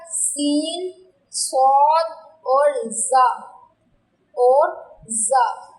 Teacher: سین، صاد اور زا ان کی ادائیگی میں سیٹی کا ٹچ آتا ہے، تو اس لیے یہ حروف صفیریہ ہیں۔ ان کا جو مخرج ہے وہ یہ ہے کہ زبان کی نوک جب سامنے کے اوپر اور نیچے کے دانتوں کے ساتھ لگے۔